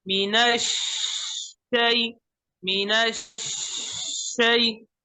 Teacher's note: आवाज दरमियान में बंद हो जाती है, इस बंद को खत्म करें, आवाज जारी रखे बिल्कुल.